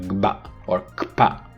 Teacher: So in both kpa and gaba, the velar and labial closures are made and released simultaneously. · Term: doubly articulated